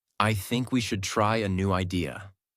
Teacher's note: Voice goes down at the end. This is called falling intonation. And it instantly makes you sound more mature, certain, and in control.